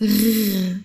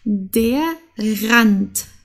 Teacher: Okay, also es ist R, das muss aus dem Hals kommen, als würdest du gurgeln.